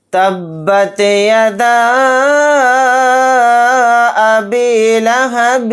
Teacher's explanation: پھر یہاں پر حروف مدہ یعنی الف مدہ کے بعد حمزہ دوسرے کلمے میں ہے الف کی شکل میں، تو یہاں پر مد منفصل کا قاعدہ ہوگا۔ اس مد کو 3 الف کی مقدار کھینچ کر پڑھیں گے۔